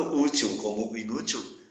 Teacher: E também por isso que a palavra inútil é acentuada também. As duas, tanto útil como inútil, são paroxítonas. Elas têm como sílabas tônicas as penúltimas, a penúltima sílaba.